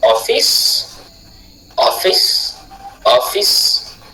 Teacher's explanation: off, accentué, fils, non accentué